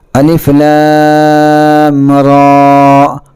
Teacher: را کو ہم کم کھینچیں گے چونکہ اس پر کھڑا زبر ہے، اور کھڑا زبر صرف ایک الف کے برابر کھینچ کر پڑھا جاتا ہے۔